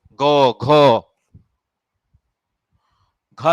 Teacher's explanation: last के तीनों में घोष हैं उनमें बोलते समय कंपन पैदा होता है